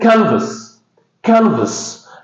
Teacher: So this word consists of two syllables. The first one is stressed. So the first syllable is a stress.